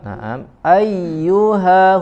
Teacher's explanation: huruf ha dari aqsal halqi, ya, dari aqsal halqi, dari pangkal tenggorokan